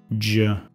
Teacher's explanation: J, come Z, emite un sonido sonoro.